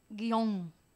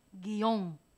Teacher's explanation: Tal parece que hay una separación un espacio entre la i y la o